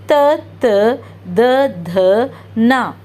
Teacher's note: ఇవి దంత్, మన టీత్ని పెట్టి ప్రొనౌన్స్ చేస్తాం కాబట్టి ఇది తావర్గ్.